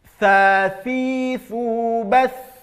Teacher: keluar ujung lidahnya, gigit ujung lidahnya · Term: Huruf tha